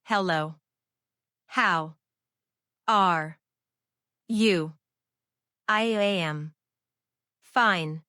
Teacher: Every syllable is the same length. Every syllable is the same volume. This is called being syllable timed.